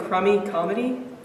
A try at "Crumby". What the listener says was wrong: It's Crumby, actually. You're not pronouncing the B.